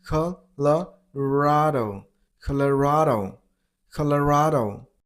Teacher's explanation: And stress on the third syllable, on ra sound,